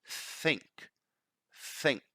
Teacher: not producing vibration just blowing the air is the sound that we hear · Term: voiceless th